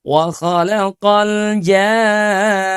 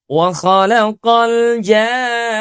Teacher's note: Kita sempurnakan panjang madnya itu enam harakat terlebih dahulu baru pada ketukan yang keenam itu bunyi tasydid.